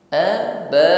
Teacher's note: Aba ada mat wajib muttasil, panjangkan 2 alif 4 harakat.